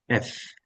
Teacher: এফ টা হবে উপরের দাঁত নিচের ঠোঁট